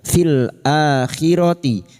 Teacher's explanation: a adalah hamzah yang diikuti oleh alif mad kecil , diperpanjang selama dua harakat, mad badal